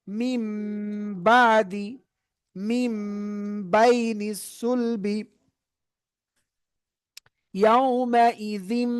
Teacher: এইবার দেখেন, এইবার আসতেছে নুন সাকিনের পর একলাবের হরফ বা, তাহলে একলাবের হরফ বা থাকলে কি করতে হয়, নুন সাকিনকে আর তানবিনকে এই ছোট্ট মিম দ্বারা পরিবর্তন করে এই মিম পড়তে হয়। নুন সাকিনের পর একলাবের হরফ বা থাকলে এই ছোট্ট মিম দ্বারা কি করতে হয়, এই নুনকে পরিবর্তন করে এই মিম পড়তে হয় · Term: একলাবের নিয়ম